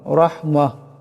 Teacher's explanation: মিন লাদুনকা লাদুন এখানে নুন সাকিনের পরে কাফ আসছে, ইকফা হবে, ইকফার একারে পরিমাণ গুণনা হবে। রাহমাহ এখানে রাকে মোটা আওয়াজে পড়তে হবে